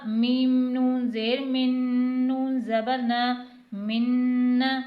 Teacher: اب یہاں پر کیونکہ حروف یرملون میں سے نون آ رہا ہے تو یہاں پر غنہ بھی ہوگا اور ادغام بھی ہوگا، یعنی ایک حروف کو دوسرے حروف میں داخل کر کے غنہ کر کے پڑھیں گے